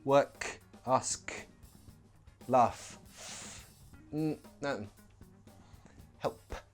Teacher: none of these have a vibration in the throat they are voiceless or unvoiced